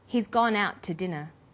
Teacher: The to is unstressed. When we link out, which is stressed, and to, which is unstressed, the final t sound in out is held slightly longer.